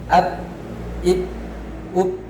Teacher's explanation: Tidak ada aliran suara ketika ba dalam keadaan sukun dan bertasydid. Selanjutnya huruf ba juga termasuk huruf istifal atau pangkal lidahnya datar, sehingga menghasilkan huruf ba ini tipis dalam segala kondisi. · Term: syiddah